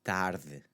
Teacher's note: You want to soften that D sound to go from a D to a th, tarde. Okay, so the TH is what I usually tell my students to kind of aim for.